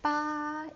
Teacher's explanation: you will notice that it's very high. Ba, and it doesn't drop, so it sounds sounds like I'm singing, but ba Jiu Jiu, it's low again.